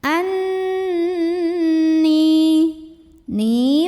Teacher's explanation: cara membunyikannya adalah Nun nya didengungkan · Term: ghunnah musyaddadah